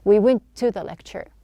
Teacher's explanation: instead of pronouncing two T's, we just have one